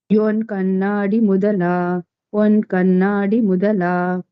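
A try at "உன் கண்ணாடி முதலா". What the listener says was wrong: One. Again, that na should be pressed with a stress. One Kannadi Mudala.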